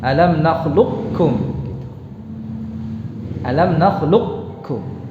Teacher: Karena qafnya lebih kuat daripada kaf. Jadi sifat isti'la'nya tidak dihilangkan sama sekali dalam pengucapannya. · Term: idgham naqis